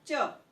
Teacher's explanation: च तो आपकी जबान तालु पर टच होती है, इसीलिए तालव्य व्यंजन के अंतर्गत आते हैं।